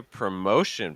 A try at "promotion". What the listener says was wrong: Yeah, I think the shin actually sounds pretty good. Watch out for the mo sound. So it's a more, mo. Hear all that breath?